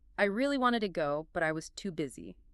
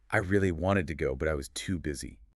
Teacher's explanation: You hear how wanted and too busy pop out. Those are the core ideas, so they carry the stress. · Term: natural rhythm